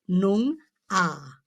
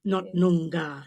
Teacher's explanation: the accent is placed on the first syllable, not the second. So it's Noong ah, like the G is almost silent.